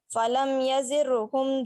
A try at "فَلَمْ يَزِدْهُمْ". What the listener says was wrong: یزد دال ہے نا یزدہم